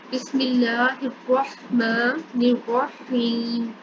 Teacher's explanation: تو جب یا جو ہے یا جزم والی آ جائے اور جزم والی یا سے پیچھے زیر ہو تو وہاں پر یا مدہ ہوتا ہے, اس لیے اس کو تھوڑا سا لمبا کر کے پڑھیں گے